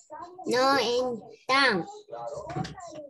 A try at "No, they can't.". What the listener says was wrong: No, they can't. Sea negativo, tratemos de pronunciarlo bien, ¿ya? Así exagerado, para yo escuchar. Porque si yo digo no, they can, parece que dijera can. No, they can't. Al final es la T que debe de escucharse. No, they can't.